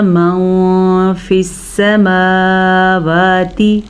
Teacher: वलहू अस्लमा मन फ़िस्समावाति, नून साकिन के बाद फ़ा हरूफ़ इख्फ़ा में से है तो नून साकिन को हम छुपे हुए गुन्ने के साथ पढ़ेंगे, यानी कि इसको मन के बजाय माँ गुन्ना भी करना है और छुपाना भी है।